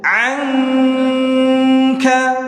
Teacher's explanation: Maka harus disamarkan huruf kafnya dengan menahan dengung. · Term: Ikhfa